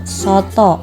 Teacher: vokal O, tengah atas belakang bundar pada kata soto